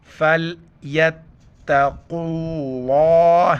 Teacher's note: لفظ اللہ سے پہلے والا حرف وہ حرف جس پر زبرزر پیش ہے، حالانکہ لفظ اللہ سے پہلے الف ہے، الف ہے، واو، ان کی بات نہیں ہو رہی ہے، بلکہ قاف کے اوپر، قاف کے اوپر پیش ہو، زبر ہو تو لفظ اللہ کو موٹا کر کے پڑھیں گے. موٹا جیسے فَلْيَتَّقُوا اللَّهَ ہے، پر کر کے پڑھنا ہے، کُلّا نہیں پڑھنا ہے، اللہ ہے.